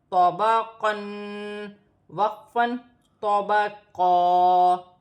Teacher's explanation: قاف موٹا ہے اور تو بھی موٹا ہے، دونوں کو اپنے اپنے مخرج سے ادا کیا جائے گا. وقف کی صورت میں ایک زبر گر جائے گی اور ایک زبر ایک الف مدہ میں بدل جائے گی، جیسے طبقا.